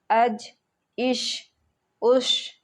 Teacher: جیم اور شین زبان کے بیچ اور اس کے مقابل میں اوپر کے تالو سے ادا ہوتے ہیں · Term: جیم اور شین کا مخرج